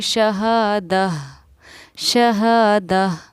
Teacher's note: یہاں گول تا پر ہم نے وقف کیا، گول تا پر وقف کرنا ہو تو وہ ہائے ساکینہ ہا بن جاتی ہے